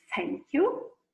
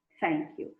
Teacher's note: Então, ele é desvozeado, ele é unvoiced. Você tem ele em thank you. Ó, ele é dental.